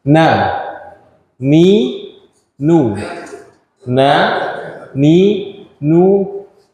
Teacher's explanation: ujung lidah dengan langit-langit depan